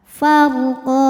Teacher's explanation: Saat berhenti di qa, hukumnya adalah mad iwad karena ada baris tanwin fathah yang diberhentikan. Cara bacanya panjang 2 harokat.